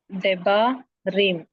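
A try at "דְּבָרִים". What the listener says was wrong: Bet is not carrying a dagesh, lene, so it should be pronounced as, how will you pronounce it?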